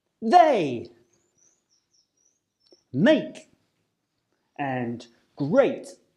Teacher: your mouth will start on the position of the /e/ sound and finish on the position of the /ɪ/ or /i:/ sound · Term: diphthong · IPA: /eɪ/